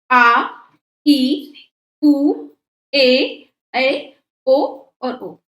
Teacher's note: दीर्घ स्वर जिसमें हरस्व स्वर से दुगना समय लगता है।